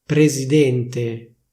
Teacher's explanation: Anzi, più verosimilmente, presidente, quindi con una S sonora